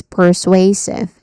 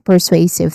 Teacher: sway, which is a stressed syllable here, so you say it a bit louder. It has a dip thong sound at the end.